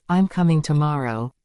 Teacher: our voice falls at the end to show it's final.